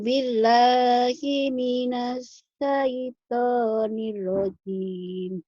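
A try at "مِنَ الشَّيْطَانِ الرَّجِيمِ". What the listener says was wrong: Nirrojim. Kurang nyamber, Bu. A'udzubillahi minasyaitonirrojim. Minasyaitonir. Nirrojim. Nirrojim. Nyamber. Nirrojim.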